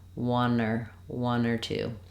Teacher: you can hear how the r links to one